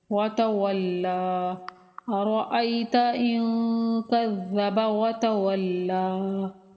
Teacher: كَذَّبَ وَتَوَلَّى، لام مشدد حرف ہے، سختی کے ساتھ پڑھیں گے اور کھڑی زبر ہونے کی وجہ سے مدہ بھی ہے تو کھینچیں گے ایک الف کے برابر